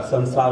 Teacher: एक दंती सा होता है, दांतों पर जीभ लगती है